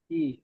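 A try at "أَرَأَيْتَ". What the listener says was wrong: হামজা ইয়া জাবার আই। জাবার রয়েছে, দেখে পড়েন।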